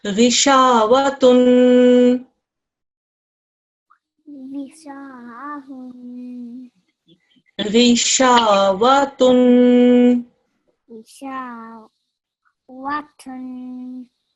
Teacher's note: There's an alif madda here, which is why I extended the sha for 2 seconds